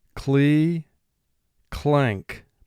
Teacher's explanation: cli clank remember n represents the sound which is another nasal sound the sound's coming out your nose when the letter n is followed by the sound k